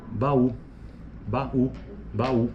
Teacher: aos ditongos temos os iatos que consistem em uma sequência de uma sequência de vogais sendo que as vogais são pronunciadas em sílabas distintas